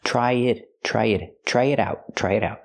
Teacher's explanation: We hear the T in it pronounced as a fast D because it's between vowels.